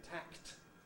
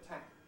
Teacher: you can't really hear the release of the k